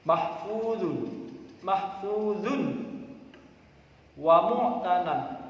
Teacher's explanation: ada tanwin bertemu huruf wawu harus dibaca Idam bunah memasukkan suaranya tanwin ke huruf berikutnya